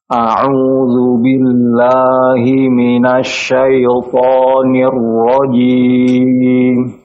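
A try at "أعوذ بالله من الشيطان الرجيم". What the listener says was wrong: Taib, untuk la-nya tipis ya Pak ya. A'udzu billah, la jangan lo.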